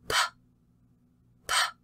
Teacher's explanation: If you put your hand here in front of your mouth for the P, you have a large amount of air, a large puff of air coming out